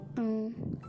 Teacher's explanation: Hasil bunyinya N. Ketiga, antara pangkal, lidah, dan langit-langit lunak, hasil bunyinya menjadi eng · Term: bunyi nasal